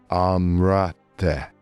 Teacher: word is written as but what we actually hear is >> the Z is effectively silent and we get an extra vowel song between the R and the T